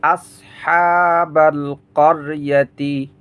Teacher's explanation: হা এক আলিফ টান হবে খারা জবর